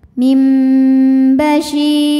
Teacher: maka bunyi Nun diganti mim mim disertai dengung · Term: iqlad, iqlab